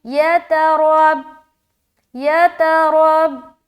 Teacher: रा को मोटा, ता को जल्द अदा कर रहे, रा के ऊपर ज़बर है तो बा से मिलाते हुए रा मोटा अदा होगा